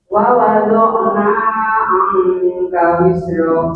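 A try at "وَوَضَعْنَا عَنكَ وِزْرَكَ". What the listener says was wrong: Sedikit kepanjangan Ibu nanya, dipotong. Wa wada'na anka wizrak.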